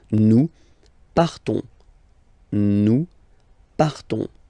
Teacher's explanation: So classic ending ONS, you don't pronounce the S, you just have this on sound nasal